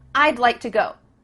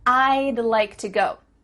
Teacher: go do you see how we can speak quicker because we're cutting off all the sounds in the word would except for that final D